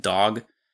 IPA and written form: dɔg (dog)